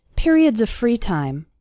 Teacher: the word of runs into the word free